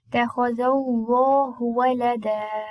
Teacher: mad طبيعي natural mad, and it will be lengthened for 2 harakat only